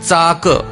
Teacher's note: च, छ, ज, झ यांचा उच्चार आपल्या तोंडामध्ये दोन प्रकारे केला जाऊ शकतो, म्हणून त्यांची उच्चारस्थाने दोन प्रकारे येतात. समजा चाक याचा उच्चार करताना जीभ दाताच्या मागे स्पर्श करते, म्हणून या वर्णाला दंत तालव्य वर्ण असे म्हणतात